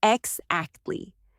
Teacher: Notice how the voice falls quickly, then cuts off.